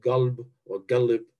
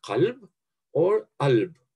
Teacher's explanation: The Bedouin dialects are characterized by the shift of the letter qaf to g. So the Arabic word qalb, heart, is pronounced galb or galib.